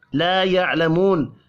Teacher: لا يعلمون الف اور واو مدہ ہے دونوں 1 الف کے برابر کھینچ کر پڑھے جائیں گے. عین ساکن پر قلقلہ نہیں کرنا